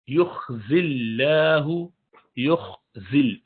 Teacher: لا یخزی اللہ، یخزی اللہ، یخزل، ذل پہ یہ صفیر کی آواز ہونی چاہیے. لفظ اللہ کا لام سے پہلے کسرہ ہے، یعنی جس کو آپ زا کی زیر سے ملا رہے ہیں، اسی لیے اس کو باریک پڑھیں گے